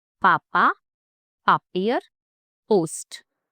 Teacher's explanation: Close your lips and pop it out with a burst of air. Clean, crisp, no surprise. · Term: German P